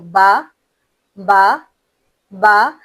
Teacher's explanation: जब हम बा कहते हैं तो हमारे होठ देखें बंद हो रहे हैं। फिर हम दोबारा खोल रहे हैं। तो दोनों होठ मुकम्मल मिलकर फिर जब खुल जाएं तब हमारा हर्फ बा अदा होता है। · बा दोनों होठों को मुकम्मल तौर पर बंद करके अदा किया जाता है। यानी आप अगर थोड़ा गौर करें तो ब बा हमने दोनों होठों को आपस में मिलाया।